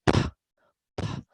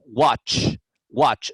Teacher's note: una como la letra que siempre y cuando el verbo base termine en sonido sin vibración sin vibraciones que las cuerdas vocales no hacen vibración